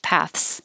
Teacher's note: most people make it easier and just say paths with a voiceless th and a very quick th